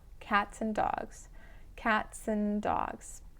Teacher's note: I'm talking about the reduction of and to a short n sound.